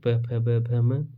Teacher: दोनों होठों से हम स्पर्श होने पर इसकी ध्वनि निकलती है, इसको इसे ओष्ठ्य वर्ण कहा जाता है। यानी कि ये हो जाएंगे ओष्ठ्य वर्ण। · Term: प वर्ग